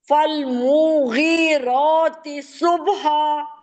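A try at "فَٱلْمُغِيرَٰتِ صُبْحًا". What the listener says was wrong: मु को नहीं खींचे मुगी पे जोर दे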